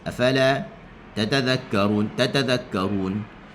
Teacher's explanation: Sebenarnya tatazakkarun kita sebut ni tak cukup harakah. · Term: ikhtilas